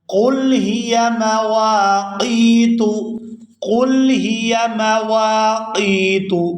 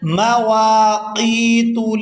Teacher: یہاں واو کو الف مدہ کی وجہ سے اور آگے قاف کو یا مدہ کی وجہ سے کھینچ کر ادا کیا جائے گا